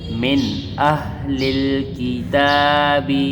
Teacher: میم نون زیر مین، میم اس نون ساکن کے ساتھ ملی تو نون ساکن کے بعد حروف ہلکی میں سے حمزہ آئی ہوئی ہے، تو یہاں پر اظہار کا قاعدہ لگے گا، یعنی ہم غنہ نہیں کریں گے۔